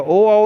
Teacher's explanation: ओ औ में कंठ के साथ ओंठ का उपयोग हो रहा है, इसलिए कंठोष्ठ।